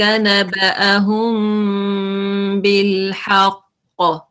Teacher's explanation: جی نحن نقص عليك نبأهم بالحق نبأهم یہاں پہ آپ نے اخفا کرنا ہے اخفا شفوی کیونکہ میم ساکنہ کے بعد جب با آ جائے تو وہاں پہ لائٹ نیزل ساؤنڈ ہوتا ہے